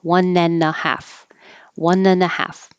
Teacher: Just remember that it doesn't have to sound like 1.5 hours. You don't have to say the and with a D.